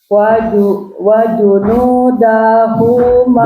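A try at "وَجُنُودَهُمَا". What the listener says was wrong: Daknya jangan panjang. Wajunudahuma.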